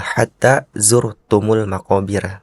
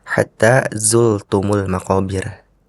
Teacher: Tadi rnya terdengar seperti huruf lam sehingga berbunyi hatta zultumul maqobir.